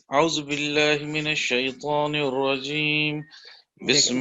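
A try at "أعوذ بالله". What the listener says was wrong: بس نہیں, بس بس بس بس اتنا ہی میں نے یہ جو ہے نا ابھی آپ نے پڑھا اعوذ, یہ یہاں واو نہیں ہے, یہ ہے اعوذ.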